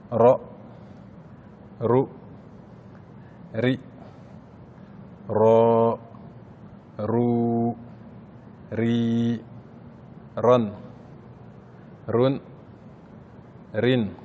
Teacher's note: on va rouler le R avec la langue, comme dans la langue espagnole ou italienne